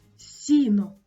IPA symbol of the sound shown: с'